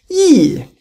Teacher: Fourth tones go from top to bottom